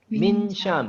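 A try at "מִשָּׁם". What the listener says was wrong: Would you just speed it up? Your pronunciation.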